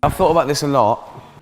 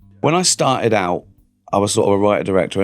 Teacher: Glottal T's, yep, quite common. Ricky Gervais especially uses glottal T's everywhere.